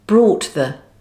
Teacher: In slow speech, the t may be fully pronounced with an audible transition to the following th